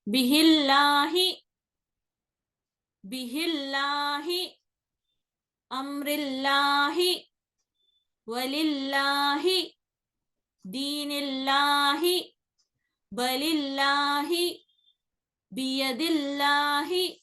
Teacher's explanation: لام اس میں جلالہ سے پہلے والے حرف پر اگر زیر آ رہی تو لام اس میں جلالہ کو باریک یا مرقق یا ترقیق طریقے سے پڑھنا پڑتا